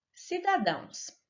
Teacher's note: nestas duas palavras a sílaba tônica é a última sílaba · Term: oxítonas